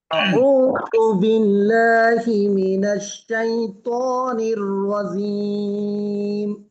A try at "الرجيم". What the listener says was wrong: জিম আগে মোটা, জিম আগে মোটা, জিব্বার মাঝখানে প্রেসার দিতে হবে।